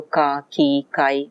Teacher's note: ka is a velar, and the velarity, the velar consonant combines with the vowel to become a syllable